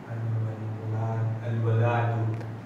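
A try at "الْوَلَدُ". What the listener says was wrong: Hindi al-waladu. Waladu, may mad na naman. Al-waladu.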